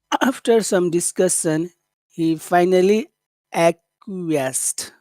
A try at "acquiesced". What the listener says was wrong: You're saying two syllables, but it's three syllables. Acquiesced.